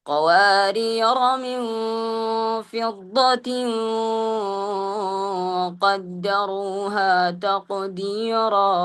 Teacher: ഫത്ഹുള്ള അക്ഷരത്തെ നമ്മൾ എങ്ങനെയാണ് ഉച്ചരിക്കേണ്ടത് അതേ രൂപത്തിലാണ് അവിടെ എന്ത് റോയിനെ നീട്ടാതെ ഫത്ഹ ചെയ്ത് നമ്മൾ ഉച്ചരിക്കേണ്ടത്